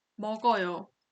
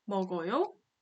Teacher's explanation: But since they look exactly the same, for the statement, you have to lower the intonation at the end, and for the question, you have to raise the intonation at the end.